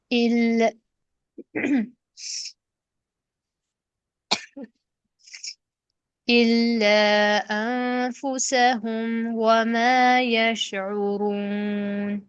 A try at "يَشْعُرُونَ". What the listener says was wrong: شین قلقلہ نہیں ہے. شین کی تفشی اور رخوت برقرار رکھتے ہوئے نرمی سے لیں اس کا مخرج اور پھر اس کو ادا کریں. یشعرون.